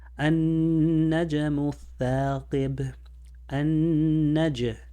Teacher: The jim is like a j, a little bounce with the j sound.